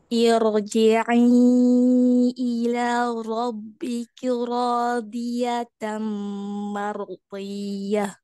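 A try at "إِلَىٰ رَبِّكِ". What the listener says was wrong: Tadi ila, jangan bergelombang. Ila robbiki. Ila robbiki. Jadi sudah selesai satu huruf, baru pindah ke huruf berikutnya ya. Jangan buru-buru.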